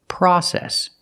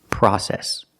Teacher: Use the short ah sound like hot and stop. The open sound